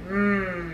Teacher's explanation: sound the um sound is also called our yummy sound um we make the sound by bringing our lips together and humming um our voice needs to be on for this sound so